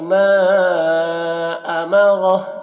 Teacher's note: را کو بھی پر پڑھنا ہے موٹا کر کے